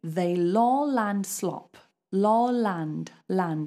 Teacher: now we have to follow the rules of a light L because there's a vowel